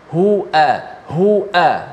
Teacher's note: huruf hamzah dengan ha ni satu makhraj, di mana pangkal leher kita